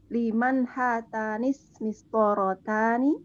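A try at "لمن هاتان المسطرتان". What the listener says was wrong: Aywa, hatanil. Di sini ada alif lam ya. Liman hatanil mistorotani.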